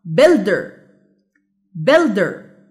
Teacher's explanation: يبقى الستريس سيلابل هو build.